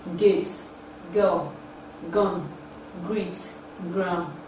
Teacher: it is a voiced sound it involves the back of the tongue and the vellum or the thought fighting skin is production it